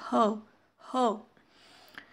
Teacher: ह बघा आपल्या घशातून थोडीशी हवा बाहेर निघते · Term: ग्लोटल